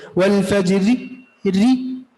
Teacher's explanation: अब इस री को पूरा नहीं पढ़े, 1/3 हिस्सा पढ़े। वल फजरी री, ये वक़फ़ बिर रोम है, उसको रा मुरामा कहते हैं।